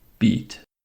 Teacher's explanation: The mouth is almost closed but the lips don't catch. This is a tense vowel. You actively hold the tongue high and draw the lip slightly back. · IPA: /iː/